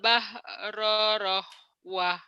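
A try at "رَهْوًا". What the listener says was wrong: Karena rahwah. Kenapa rohwah? Kenapa rohwah? Nggak ada hahnya ya. Rohwa. Wa. Jangan rohwah. Salah. Ayo ulang.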